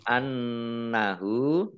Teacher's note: Fathah berdiri, mad tobi'i. Annahu, nun tasdid, dibaca hunah atau mendengung, ditahan 2 harokat. Kemudian hak dhammah terbalik, mad silah qasirah.